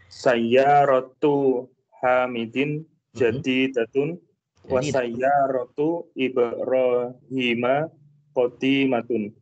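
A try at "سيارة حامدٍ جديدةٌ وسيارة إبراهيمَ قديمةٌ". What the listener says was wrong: Masya Allah, mumtaz, barakallahu fiik.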